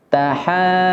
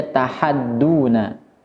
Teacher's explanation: Huruf ha harus dibaca 6 harokat terlebih dahulu, kemudian masuk ke huruf dad yang tasdid.